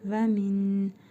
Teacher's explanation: Sonra dəl hərfi gəlib ihva qaydasına görə nun hərfini bir əlif miqdarı uzadaraq burnumuzda tələffüz edirik